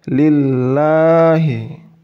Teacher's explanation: dibaca tipis itu ketika tanda baca kasroh itu bertemu dengan tanda baca tasydid pada lafaz Allah